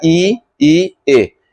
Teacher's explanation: बोलने में जीभ आपके आगे आ रहा है, आपका जीभ बढ़ रहा है, इसीलिए इसको बोलते हैं अग्र स्वर